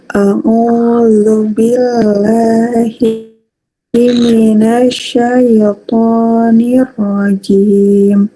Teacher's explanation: Jimnya masih ngowos. Terus lamnya tadi masih sedikit kurang ke belakang.